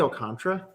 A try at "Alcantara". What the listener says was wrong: It's Alcantara. Oh, so you're just saying you don't pronounce the last A?